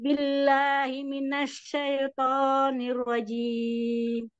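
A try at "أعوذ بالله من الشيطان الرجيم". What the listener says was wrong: Ya, ditahan dulu ya untuk yang huruf-huruf yang ditasydid, ditahan dulu sekitar satu harokat. A'udzu, terutama huruf shin tadi kan sifatnya rokhoah, jadi agak lama. A'udzu billahi minasyaitonir rajim. Minasyaitonir rajim. Huruf ya yang disukun itu i sekali ya Ibu, jangan sampai miring e. Syaitoni.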